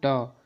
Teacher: इनको बोलते हैं तो हमारी जिह्वा मुड़ जाती है। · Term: मूर्धन्य व्यंजन